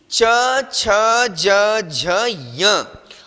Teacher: इचु यशानाम तालु, तालु, जब हमारी जिह्वा तालु में स्पर्श करती है तब ये वर्ण निकलते हैं